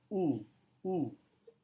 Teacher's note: kali ini vowels dalam bentuk u ini adalah u yang panjang u adalah vowel tipe close back rounded vowel nah perhatikan pada kata rounded jadi pada kata rounded bibir kita